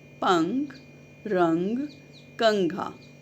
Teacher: अनुस्वार का उच्चारण नाक से होता है और इसके प्रयोग के लिए हम अक्षर के ऊपर अनुस्वार या बिंदी का प्रयोग करते हैं, जैसे पंख, रंग, कंघा।